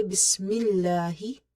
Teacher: we make this lam of the word Allah light because there is a kasra before it